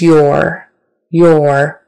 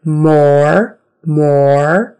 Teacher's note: your with the vocalic o r on the end of that word or so o plus ER or or so your and also